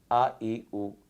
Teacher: حمزہ ذرا جھٹکے کے ساتھ ادا ہوتا ہے